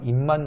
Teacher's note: 입만 같은 경우는 미음으로 바뀌었죠.